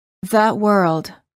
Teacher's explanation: when it's followed by a consonant the final sound is uh as in fun